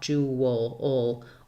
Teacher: You're going to hear a little bit of a w sound and then a schwa, jewel, or an vowel like in the word wool.